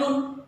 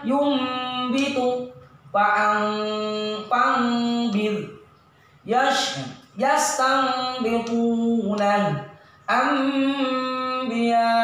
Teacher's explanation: Mengganti huruf nun mati atau tanwin menjadi seperti suara huruf mim mati. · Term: iqlab